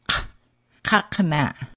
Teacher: Q pronounced as a K deep in the back of your throat